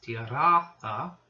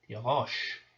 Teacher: that T underline in Ugaritic becomes the sheen, the SH sound in Hebrew